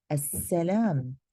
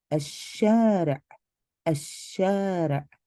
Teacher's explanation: The lam of alif lam does not take a sukoon. Instead, it becomes a silent letter. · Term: sun letters